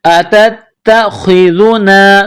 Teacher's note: تا کے ساتھ پلس کرنا ہے، تا میں سختی کرنی ہے، خا کو موٹا پڑھنا ہے، ذال کو نرم پڑھنا ہے